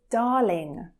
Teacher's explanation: I'm not pronouncing the R. It's very, very soft and it has more of a long A sound. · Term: long R sound